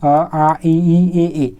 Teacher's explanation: इसमें उच्चारण के समय ओठ जो है गोलाकार नहीं होता है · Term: अवृत्तमुखी